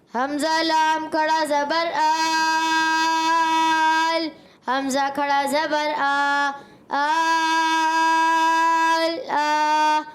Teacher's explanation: کھینچنا ہے پورا 3 الف